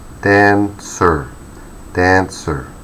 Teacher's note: Okay, so you might notice when it's being mentioned out loud, dancer has 2 syllables, dancer, dancer, and the main stress goes to the first syllable